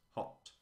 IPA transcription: hɒt